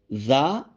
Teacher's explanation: دانتوں کے درمیان میں زبان کی نوک رکھ دیں تو جب ادا کرتے ہیں تو ذال ادا ہوتا ہے